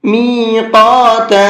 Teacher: قاف کو منہ بھر کے بھی پڑھنا ہے اور ساتھ ساتھ کھینچ کر کے بھی پڑھنا ہے